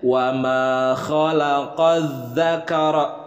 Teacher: Ketika melafalkan huruf kha, yang mana makharijul hurufnya adalah dari adnal halqi, dari ujung tenggorokan, dan setiap pelafalan kha seperti ada dahak atau serak di dalam tenggorokan.